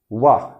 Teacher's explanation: निचले ओंठ को ऊपर के दांत से स्पर्श कराकर बोलते हैं। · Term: दंतोष्ठ